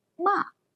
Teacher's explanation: Finally, the fourth tone, a falling tone, makes it ma, meaning to scold.